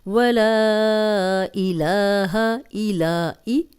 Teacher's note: لا لام پہ کھڑی زبر ہے، 2 حرکات لمبا کریں گے